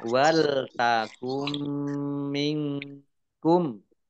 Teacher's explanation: Nun sukun bertemu dengan huruf kaf, bacaan ikhfa dibaca samar-samar.